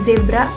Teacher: bunyi Z dalam kata pinjaman dalam bahasa asing seperti zebra adalah geseran bersuara